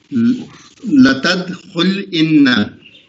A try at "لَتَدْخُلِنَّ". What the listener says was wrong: یہ انا الگ کیوں پڑھ رہے ہیں آپ؟ خلنا نہیں پڑھ سکتے؟